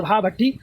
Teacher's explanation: भा का उच्चारण ओट से है महाप्राण है